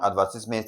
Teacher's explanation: advertisement, the stress is placed on what now? Ad